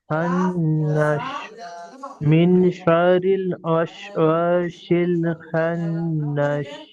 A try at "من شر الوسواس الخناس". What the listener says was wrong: আপনি শিন বলছেন কেন? এটা তো সিন, আপনার উচ্চারণটা শিনের মতন হচ্ছে, আপনি সিন পড়বেন। সিন ওয়াস ওয়াসিন খান্নাস।